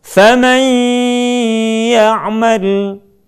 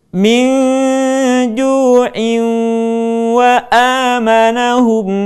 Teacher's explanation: Adapun perbedaan membacanya ketika kita membaca nun mim tanwin yang berwarna merah, maka ingat yang pertama adalah tidak tergesa-gesa. Kemudian kita baca nun mim tanwin tersebut dengan cara meleburkan kepada huruf yang kita hadapi.